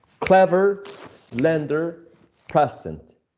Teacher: the first syllable stressed and the second one is unstressed